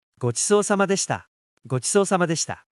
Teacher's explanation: Notice the long O sound and shortened U in deshita.